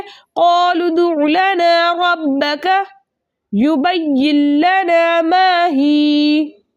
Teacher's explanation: ठीक है, इसके अलावा नून साकिन के बाद लाम और रा में से लाम आ रहा है, इसलिए यहाँ पर नून साकिन को हम लाम से मिलाकर इस तरह पढ़ेंगे कि दोनों एक साथ मुशद्दद अदा हो लेकिन गुन्ने के बगैर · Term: इदगाम बिला गुन्ना